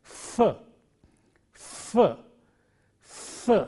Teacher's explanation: Initially it is f, f, f. There is friction coming out between the teeth and the lip.